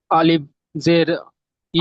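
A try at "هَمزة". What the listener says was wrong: আলিফ, আলিফ কেন? এক এক এক মিনিট, এক মিনিট, আপনি আলিফ কেন, আলিফ কেন, হ্যাঁ হামজা, হামজা বলেন।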